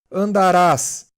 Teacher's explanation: Já as formas arrisotônicas têm a tônica na desinência, fora do radical. Andarás, a palavra é oxítona, a tônica é ras, a última sílaba, que não faz parte do radical